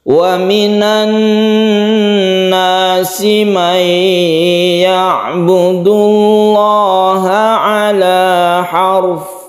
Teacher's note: Dan roknya di sini karena sebelumnya ada fathah maka roknya dibaca tebal. Ala harf, tebalkan roknya.